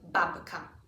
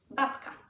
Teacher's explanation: the B becomes more of a p